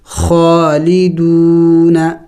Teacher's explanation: خو کڑی زبر خو، لام زیر لی، دال واو پیش دو، نون زبر نہ، خالدون. واو مدہ ہے، اس کو ایک الف کے مقدار کھینچنا ہوتا ہے